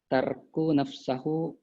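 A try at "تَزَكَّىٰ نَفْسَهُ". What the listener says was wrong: Emang ini itu taza? Tazakau nafsahu.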